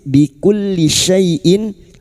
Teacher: huruf syin wastul lisan atau tengah lidah. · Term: huruf shin